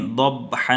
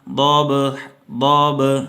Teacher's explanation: ہونٹوں کو ملا کے چھوڑ دینا ہے، ہونٹوں کو ملا کے رکھنا نہیں ہے با کے اوپر، بلکہ ملا کے چھوڑ دینا ہے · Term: قلقلہ